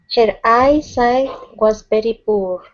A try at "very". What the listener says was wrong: Watch the R sound. So instead of saying very, it's very.